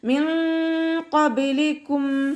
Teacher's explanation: നൂൻ സാക്കിനയ്ക്ക് ശേഷം ഇഖ്ഫാഇൻ്റെ ലെറ്ററായിട്ടുള്ള ഖാഫ് വന്നു. നൂൻ സാക്കിനയെ മറച്ചു വെച്ചിട്ട് മണിച്ചോതി കൊടുക്കുക.